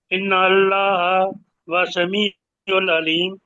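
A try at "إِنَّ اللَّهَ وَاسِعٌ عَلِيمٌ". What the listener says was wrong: نہیں، نہیں نہیں، آپ واسعٌ نہیں پڑھا نا.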